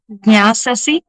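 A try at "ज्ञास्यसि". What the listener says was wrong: జ్ఞాస్యసి సి దీర్ఘం తీయదు, చివరి అక్షరాలు దీర్ఘం తీయకూడదు ఎప్పుడు కూడా. దీర్ఘం తీయడం ఆ ఊ ఆ సడగదు చివరికి. జ్ఞాస్యసి ఈ ఈ అని వస్తుంది, అది అలవాటు చేయొద్దు ఎప్పుడు కూడా.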